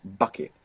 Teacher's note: a smaller piece of paper in front of your mouth and make the b in English like bucket and you will see that paper move with that burst of air · that hard B in English is a plosive sound it means you cover up a little bit of air and · you will see that paper move with that burst of air that comes with bucket. Visible. That hard B in English is a plosive sound.